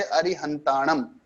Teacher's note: अगर अंतिम में अनुस्वार आता है तो उसका तो उच्चारण म ही होता है